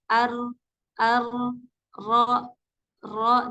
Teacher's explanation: Jadi keluarnya itu kurang lebih eh satu sampai dua getaran saja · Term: huruf Ro